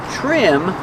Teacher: trim with TR makes the CH sound like chicken